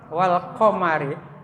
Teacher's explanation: Ro-nya adalah tarkik, wal qamari.